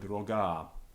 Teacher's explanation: it's got a long vowel on the end short at the beginning so our ear automatically assumes and picks up that long vowel